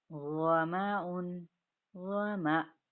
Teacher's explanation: جب حمزہ کو ساکن کر دیا جائے گا تو جھٹکے کے ساتھ اس کی ادائیگی ہوگی